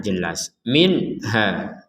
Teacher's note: nun sukun bertemu ha maka kita membacanya dengan jelas